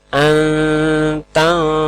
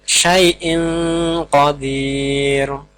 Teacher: nun sukun atau tanwin tadi dibaca samar-samar namun tetap diberi dengung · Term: ikhfa Haqiqi